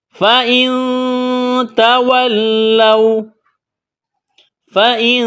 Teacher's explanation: نون ساکن کے بعد تا ہے، حروف اخفا ہے، تو یہاں پر اخفا کریں گے، آواز ناک میں چھپائیں گے